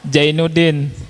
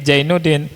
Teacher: saudara-saudara saya atau sebagian kawan kalau ngomong zai itu ja.